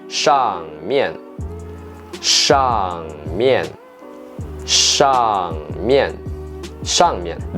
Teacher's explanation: Shang with the fourth tone. Mian also with the fourth tone.